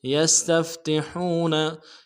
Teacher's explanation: सीन की सीटी बारीक होगी, ता को नरम से अदा करेंगे, फा के साथ मिलाएंगे, अगले ता को नरम से अदा करेंगे, हा को गहराई से अदा करेंगे